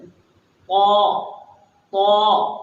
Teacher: اور جب ہم طا کی ادائیگی کی بات کرتے ہیں تو طا کو ہم تھوڑا نرمی سے اور تھوڑا منہ کو بھر کر کے نکالتے ہیں، منہ بھر کے، کہ طا۔ زبان کی نوک اوپر کے دانتوں کے پیچھے لگے گی، جڑ میں، طا طا، طوا نہیں، طا۔